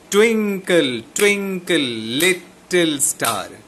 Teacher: twing will be stressed. Again, twin will be stressed. Lit will be stressed. And star will be stressed.